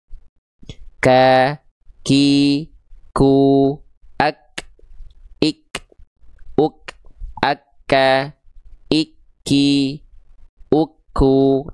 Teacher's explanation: Percikan percikan nafas ya apabila disentuhkan tepat di area makhrajnya ya antara langit-langit yang keras dan lunak.